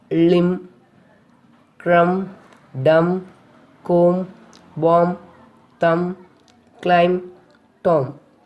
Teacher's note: B is not pronounced after M at the end of a word. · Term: silent B